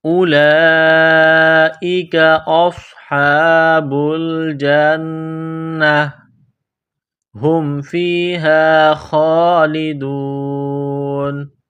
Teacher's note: نون مشدد ہے، آواز ناک میں چھپائیں گے، غنہ کریں گے۔ اولئک اصحاب الجنہ ہم فیہا خالدون، ہم فیہا خالدون، خا کو موٹا کرنا ہے، ایک الف کی لمٹ میں کھینچنا ہے۔